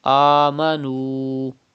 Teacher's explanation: You can see pesh before waw sakin. It is waw madda. Stretch up to 2 harakat.